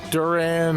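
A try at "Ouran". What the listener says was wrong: It's an O.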